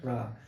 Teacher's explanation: मूर्धा में आपकी जीवा एकदम आके कंपन करती है। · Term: मूर्धन्य